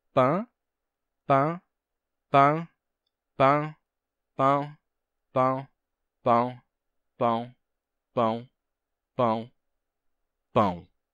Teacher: a gente tinha Pan mas com o passar do tempo gradualmente as pessoas foram pronunciando de uma forma que terminou gerando um ditongo nasal